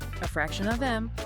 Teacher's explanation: the vowel in of weakens significantly. This happens because these words carry less important information compared to the main content words around them.